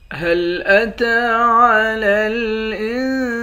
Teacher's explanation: تا کے اوپر کھڑا زبر ہے، کھڑے زبر کو ایک الف کی مقدار کھینچ کر پڑھتے ہیں۔